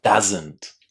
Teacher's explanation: Doesn't with a nice short ah.